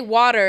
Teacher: So I'm like, oh, I think that's also just true of like American accents maybe, but thank you, like water, like even when I say water, it's like there's not a difference between if that was like a D or if that was a T.